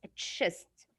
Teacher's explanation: C and H give you the sound ch, like there's T with it. Okay, don't say chest, it's chest.